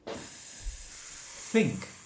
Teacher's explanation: My tongue comes out 0.5 centimetre between my teeth, no? And then I push air through. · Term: theta